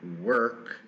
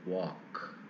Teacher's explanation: korean does not have an equivalent central vowel and as a consequence many speakers will reach for a more rounded back vowel